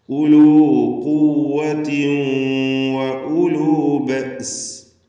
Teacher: ഖുവ്വത്തിൻ എന്നതിന് തൻവീൻ ശേഷമുള്ള വാവ് വന്നതുകൊണ്ട് ഇദ്ഗാം ബിഗുന്ന ചെയ്ത് ഖുവ്വത്തിൻ വ എന്ന് ലയിപ്പിച്ചുച്ചരിക്കണം.